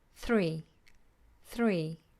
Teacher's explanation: just one very quick tap and then flat